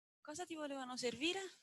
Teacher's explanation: This, on the other hand, is an example of eco WH question. Here we have a tune with a rising pitch accent labeled L star plus H. It is the same as the one found for the information seeking condition, but as you can see, it appears to have a wider span.